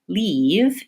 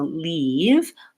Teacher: when you're saying something like leave you feel that your tongue is tense and you can also feel more of a smile or tension